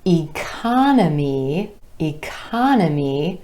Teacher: emphasis on the second syllable and the ah vowel sound